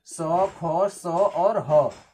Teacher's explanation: तो बड़ा स, ख, स, ह, यानी जब इसको बोलते हैं तो हमारे मुंह से जो हवा निकलती है वो घर्षण के साथ निकलती है। जब हम उष्म व्यंजन को बोलते हैं तो हमारे मुंह से जो हवा निकलती है वो रगड़ खा करके निकलती है